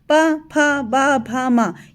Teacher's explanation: ये आपके सारे लिप्स जो हैं दोनों एक दूसरे से टच कर रहे हैं